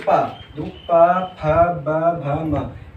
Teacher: अब इनको बोलेंगे पा, जो पा फ ब भ म, इनको अगर बोलेंगे, अगर आप खुद से बोल के देखेंगे तो ये आप जितने भी व्यंजन हैं आप अपने होठ से होठ ना मिला करके बोल ही नहीं सकते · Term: ओष्ठीय व्यंजन